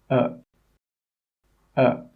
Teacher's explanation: it comes from the very middle of the mouth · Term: schwa sound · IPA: ə